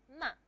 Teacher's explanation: Nasal. You remember the nasal cavity is open when you pronounce ma. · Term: bilabial nasal